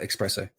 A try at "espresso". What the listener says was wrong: There's no X. There's no X in espresso, by the way.